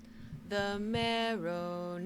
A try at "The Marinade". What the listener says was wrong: There's no O in Marinade. Let's try it one more time.